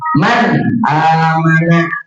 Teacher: nun sukunnya atau tanwinnya yang dibaca jelas tanpa ada dengung itu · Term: Izhar